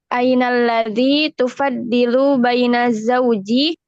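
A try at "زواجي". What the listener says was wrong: Zawaji, bukan zauji. Zawaji.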